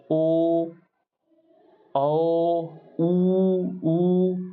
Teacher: वृत्तिमुखी मतलब जिसको बोलने में होंठ गोले हो जाए